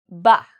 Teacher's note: use both our lips when we pronounce sounds so for example we will use our top lip and our lower lip together so when we make a B sound we use our lips